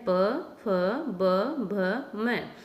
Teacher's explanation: ओष्ठ होते हैं दोनों होठ, कि दोनों होठों के बीच में से ये वर्ण निकलते हैं।